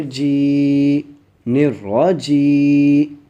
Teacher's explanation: ٹھیک ہے، جیم یا زیر جی نرجی. میں ایک الف کی مقدار کھینچ کے پڑھا ہوں کیونکہ یہ یا مدہ ہے.